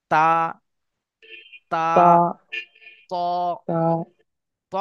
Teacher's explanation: জীবের আগা এবং সামনের উপরে দুই দাঁতের গড়ার সঙ্গে লাগে